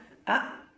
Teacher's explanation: মাখরাজ হইছে এই যে গলার শুরু ওখান থেকে ওখান থেকে হইছে আলিফের উচ্চারণ